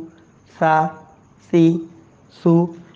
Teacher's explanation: जुबान की नोक ऊपर के दांतों के किनारों के साथ लगती है नरमी से ये हर्फ अदा होते हैं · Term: नरम हर्फ